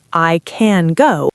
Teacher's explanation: The word can is a function word. It is grammar. So we reduce it. It becomes awah.